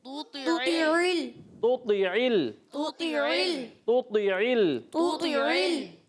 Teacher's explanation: دونوں کا مخرج ایک ہی ہے مگر تا باریک اور تو موٹا